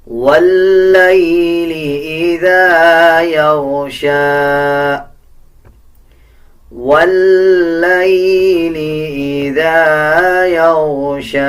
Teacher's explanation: لام کے اوپر شد ہے، واو کو لام کے ساتھ ملا کے پڑھا جائے گا اور لام کو مضبوطی کے ساتھ ادا کیا جائے گا